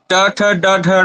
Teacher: ट ठ ड ढ ण का उच्चारण करेंगे तो यहाँ पर ये मूर्धा में जुड़ेगा, स्पर्श होगा इसका